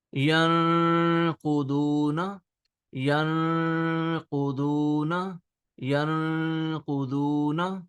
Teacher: Instead of yanquzuna simple, we are hiding half sound of noon. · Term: ikhfa